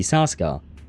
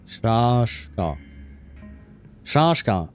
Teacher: so it's not an S sound, it's a sh sound